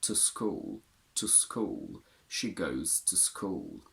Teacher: they're content words t o does it has two weak forms the long u becomes a schwa if it's followed by a consonant